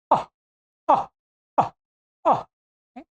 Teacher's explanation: पूरे हकार के सदृश नहीं, ये मानिएगा आधा, हाफ हकार की ध्वनि मानिएगा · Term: विसर्ग